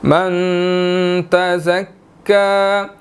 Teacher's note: نون ساکن ہے، اخفا ہوگا